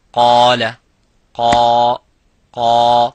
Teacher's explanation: So the alif is mufakham, it is a heavy because of the qaf.